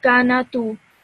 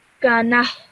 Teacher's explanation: when you pause, this tal marbuta now becomes a ha, okay? So you get rid of the ta, you get rid of the two dots, you get rid of the dhamma, and you're just left with a letter ha.